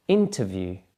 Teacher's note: can you hear hear that the stress is on the first syllable